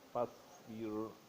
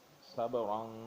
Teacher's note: خیر فاصبر، فاصبر صاد موٹی ہے کیونکہ یہ حروف مستعلیہ میں سے ہے، اسے موٹا پڑھنا پڑے گا. را ساکن ہے، ماں قبل اس کے زیر ہے، اس لیے اسے پتلا پڑھنا پڑے گا. فاصبر صبرا، صبرا با ساکن ہے، یہ حروف قلقلہ میں سے ہے، اس لیے اس پہ قلقلہ کرنا پڑے گا، یعنی آواز کو ہلا کے نکالنا پڑے گا.